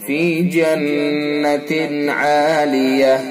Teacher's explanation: نون مشدد ہے لہذا حرف غنہ ہوگا، یعنی ایک الف کے برابر ناک میں آواز لے جائیں گے